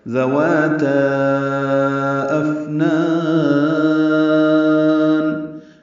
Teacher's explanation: افنان میں حمزہ اقصی حلق سے ادا ہوگا، اس کی جہر کی صفت ہے، بلند آواز سے ادا ہوگا۔ حمزہ فا سے ملائیں گے، فا ساکن پہ حمز ہے، یعنی اس میں سانس جاری رہتی ہے۔